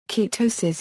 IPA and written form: kɨˈtoʊsɨs (Ketosis)